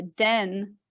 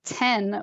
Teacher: someone about a den versus the word ten with a t on the lips they look exactly the same you need to be able to hear the vocal fold vibration to tell the difference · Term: voiced versus voiceless